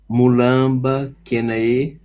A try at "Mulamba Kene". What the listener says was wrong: Mulamba Kene, ignora o A do Kena. Tanto faz, pode dizer Mulamba Kena ou Mulamba Kene, mas não é Kena, não. É aquela lei das vogais.